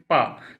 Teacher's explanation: तो पा का उच्चारण स्थान आप स्वतः उच्चारण करके देखेंगे। पा तो दोनों ओष्ठ मिलते हैं इसलिए इसका उच्चारण स्थान ओष्ठ है